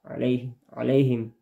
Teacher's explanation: a itu adalah wastul khalqi. Dia adalah huruf tengah tenggorokan